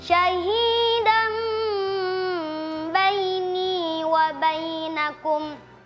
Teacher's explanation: Fathatain bertemu dengan huruf ba yang dibaca dengan mim.